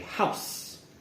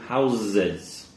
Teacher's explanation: if we're saying it in singular we would say house hear that nice s sound house however when we're saying plural the house the s sound changes to a z